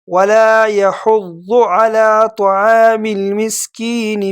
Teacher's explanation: میم کو لام کے ساتھ ملانا ہے، بیچ میں یہ جو الف آپ کو نظر آئے اس کو ختم کرنا ہے۔